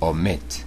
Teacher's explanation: this verb has two syllables finishes in consonant vowel consonant and the stress is on the final syllable